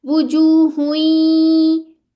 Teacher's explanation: ये जो या की साउंड आ रही है इनकंप्लीट गुना है